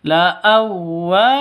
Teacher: wa panjang 2 ketukan karena ada alif diawali dengan fathah. La'awwa, jadi wawu tasydid itu jangan didengungkan.